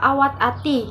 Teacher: Bunyi hambat alveolar yaitu T sudah muncul baik pada awal, tengah, dan akhir kata, seperti pada kata awat ati yang memiliki arti pesawat merpati.